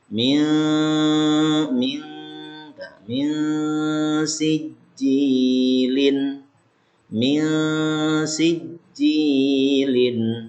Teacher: Kemudian ketiga, ini ikhfa hakiki. Nun sukun bertemu dengan sin. Cara bacanya, ya masukin ke khayshum, ke pangkal hidung.